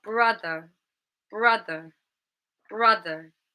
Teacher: The stress is in the first syllable. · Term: word stress